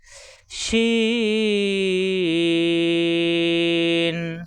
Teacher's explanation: সিন শিন 3 মাথা উপরে 3 নক্তা শিন, শ্বাস আওয়াজ হবে, জিব্বার মাঝখান উপরে তালুতে লাগবে